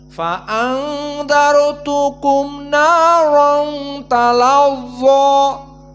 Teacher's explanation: Talazza, maka awas dibaca dengan mufakhamah yang kuat. Dan dha di sini talazza dalam keadaan kuat sekali dikarenakan ada alif lainah, maka tafkhimnya sangat tebal. Dan juga di sini mad tabi'i talazza.